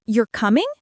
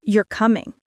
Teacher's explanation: you're coming goes up. You're coming goes down. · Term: intonation